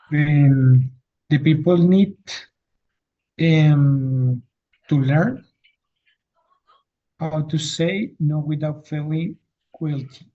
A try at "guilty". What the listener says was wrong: Okay, in this word, you, it's omitted here. So guilty. you omit the you doesn't sound, it's silent, and you just pronounce I, guilty.